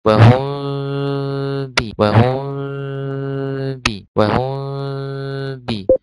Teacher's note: ويسمى إخفاء شفويا لأن الميم والباء يخرجان من الشفتين